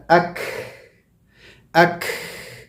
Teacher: آواز تو رک گئی میری کاف کی، لیکن ہوا مستقل جا رہی ہے، جاری ہے. تو continuation of breath but stopping of the sound. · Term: حرف المحموسہ